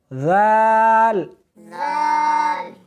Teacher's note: زال نہیں، سختی نہیں کرنی بلکہ نرمی کے ساتھ پڑھنا ہے